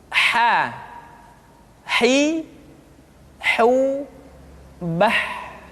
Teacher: Huruf ha dikeluarkan dari tengah-tengah tenggorokan.